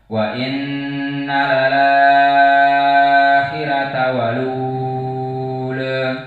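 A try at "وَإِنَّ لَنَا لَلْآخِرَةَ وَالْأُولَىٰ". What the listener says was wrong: lananya mana?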